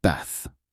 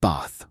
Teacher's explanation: In American English, it's pronounced with a short a, like bath, rhyming with math. But in British English, especially in the south of England, it's often pronounced ba with a longer, more open a sound, similar to father.